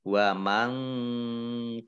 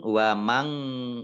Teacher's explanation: nun sukun bertemu dengan huruf kaf, bacaan ikhfa, dibaca samar-samar. Wa mangkafaro, ya, jangan wa mang, ya, jangan eng.